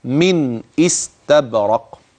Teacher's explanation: في هذه الرواية وهي رواية حفص عن عاصم يحقق الهمز ويبينها كويس قوي قوي زي النون اللي قبلها يوضحها، هكذا من استبرق.